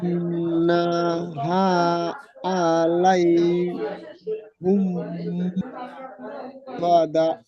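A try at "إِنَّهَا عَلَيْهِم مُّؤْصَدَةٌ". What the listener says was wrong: জি নাটা একটু টান হয়ে গেছে, ওটা হারাকাত যুক্ত করে নাটা টান হবে না, হা আলিফ মাদ্দা এক আলিফ পরিমাণ টান হবে।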